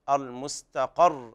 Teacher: الوقف على الراء بالسكون مع التشديد. المستقر حذف التنوين والتضعيف في الراء هكذا.